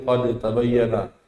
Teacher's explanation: Karena sifat dal masih lebih kuat, jadi qad tabayyana. Ya, tanpa adanya qalqalah. Nggak usah dibikin qalqalah, jadi qad tabayyana.